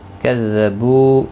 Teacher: فَإِن كَذَّبُوكَ، فَإِن نون ساکن کے بعد حروف اقفا کا کاف آئے، اقفا حقیقی ہوگا۔ کذبو بو و مدہ ہے، ایک الف کی مقدار کے برابر کھینچ کر پڑھیں گے، کا کو کھینچنا نہیں۔